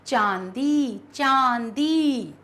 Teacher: मुंह और नाक दोनों से स्वर निकाल रहा है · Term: अनुनासिक